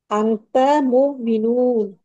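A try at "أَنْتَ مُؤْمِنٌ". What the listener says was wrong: মুমিনুন টান হবে না, মুমিনুন।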